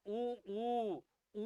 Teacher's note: उ के उच्चारण में मुख गोल होता है